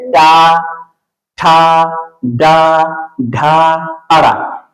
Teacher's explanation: जिहवा का अग्र भाग जब मूर्धा से स्पर्श करता है तो उसे मूर्धा वाले वर्ण कहते हैं। यानी ये मूर्धा वाले वर्ण है।